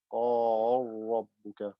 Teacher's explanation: Merge the lam into the ra. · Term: idgham kabir